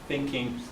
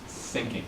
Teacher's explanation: You make the mouth is in the same shape as the S sound, but the tongue is forward. It sticks out of the mouth a little bit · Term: TH sound